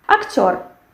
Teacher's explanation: We have the stress which falls on the last syllable, and we have this firm sound r.